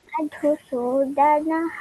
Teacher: Madhusudanaha, Visarga is there for the first one.